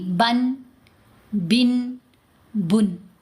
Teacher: तनवीन की साउंड जैसे बा के ऊपर हम अगर पढ़ते हैं 2 ज़बर, यहाँ पर लिखते हैं ये है बा, बा के ऊपर 2 पेश, 2 ज़बर 2 ज़ेर 2 पेश को तनवीन कहते हैं। तनवीन की आवाज़ में एंड पर नून आवाज़ आएगी